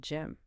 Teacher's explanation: It ends with the lips firmly pressed together to create the M sound.